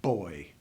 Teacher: I start with my lips closed boy and it explodes